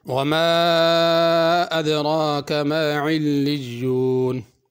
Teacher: پہلے ماں کو کھینچنا ہے، اس پہ مد ہے، دوسرے ماں کو نہیں کھینچنا۔ ادرا میں را پر کرنی ہے، علیون کی عین صحیح ادا کرنی ہے۔